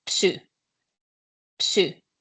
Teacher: Pronunciation is a bit different because we say, as we see the letters, we say all P and S, these after each other.